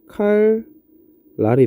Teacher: 앞에 있는 리을이 영향을 줘서 뒤에 있는 니은이 뭘로 바뀐 거야? 리을로 바뀐 거겠죠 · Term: 순행동화